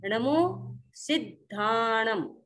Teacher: जो दकार है द, वह सी के साथ बोलेंगे, फिर धाणम बोल दीजिए, आपका एकदम शुद्ध होगा।